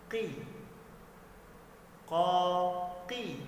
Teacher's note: Pada saat qaf berbaris kasrah maka dibaca menipis ya teman-teman, walaupun sifatnya ini sudah menebal tapi dia dibaca kembali tipis.